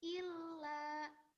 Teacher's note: jadi lanya ditasdid dulu baru dipanjangkan